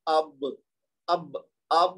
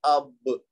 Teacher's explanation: اب جب کہیں گے تو با کے اوپر جب ہم پہنچیں گے تو آپ کی جو دونوں ہونٹ مل جائیں گے